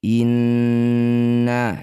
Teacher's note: nun bertasydid disebut bacaan gunnah musyaddadah, harus dengung 2 harokat.